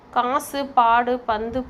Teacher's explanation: இங்கு குசுடு துபுரு போன்ற எழுத்துக்களுக்கு ஒரு மாத்திரை அளவு தான் குற்றியலுகரத்தில் சொல்லப்படுது. ஆனால் காசு, பாடு, பந்து போன்ற சொற்களில் குசுடு போன்ற எழுத்துக்களின் உகரம் குறைந்து ஒலிக்கப்படுது. இதுவே குற்றியலுகரம் ஆகும்.